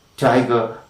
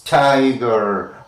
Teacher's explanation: In the case of t, tiger, burning bright, t. Okay, the front of the tongue is against the teeth ridge or alveolar ridge